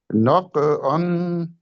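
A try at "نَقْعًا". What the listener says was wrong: نہیں، قاف کو موٹا کر کے بتائیں نا ہم نے، ناق کو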